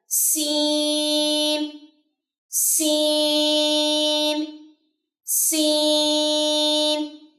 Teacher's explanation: اس میں سیٹی ہوگی, سیٹی کی آواز ہوگی